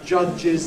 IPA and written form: ˈʤʌʤɪz (judge's)